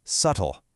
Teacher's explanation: dropping that hard B sound just makes the whole word flow so much better.